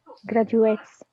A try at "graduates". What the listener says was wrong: A little shorter. حاولي تجهلي ال A, تخيلها مش موجودة ال A. كأنها مش موجودة.